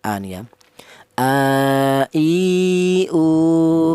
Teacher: Huruf hamzah ini keluarnya huruf berasal dari pangkal tenggorokan ya.